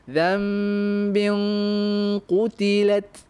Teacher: Maka kita kena tafkhimkan, tebalkan, beratkan bunyi gunnahnya. Zambing, bing, seolah-olah anda bersedia nak sebut qaf tu. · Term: gunnah tu yang tebal